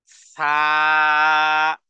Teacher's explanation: জিহ্বার আগা তারপরে সামনের যে দুই দাঁত আছে এই দুই দাঁতের মাথার সাথে লাগিয়ে দুই হারাকাত পরিমাণ টেনে পড়তে হবে এভাবে সা একেবারে পাতলা একেবারে নরম তুলতুলে জিহ্বাকে আগেই লাগিয়ে দিতে · জিহ্বার আগা সামনের দুই দাঁতের মাথার সাথে লাগিয়ে উচ্চারণ করুন